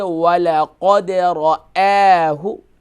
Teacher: وَلَقَدْ را جو ہے فل ماؤتھ ہوگا اور حمزہ جو ہے یہ لائٹ ہوگا